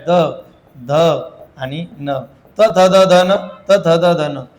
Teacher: या नचा उच्चार करतानी काय करायचं तर जिभेचा शेंडा वरच्या दाताच्या पाठीमागे मागच्या बाजूला लागला पाहिजे म्हणजे स्पर्श झाला पाहिजे